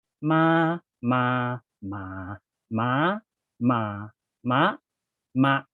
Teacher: So you have high, mid, low, rising, falling, extra high stop, and then mid stop.